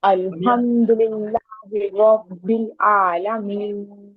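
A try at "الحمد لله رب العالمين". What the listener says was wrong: عین نکالے، عین، الحمد للہ رب العالمین،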